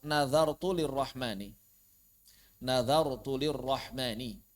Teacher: Ketika dal bertemu dengan ro, maka jelaskan dzalnya dan jelaskan rnya.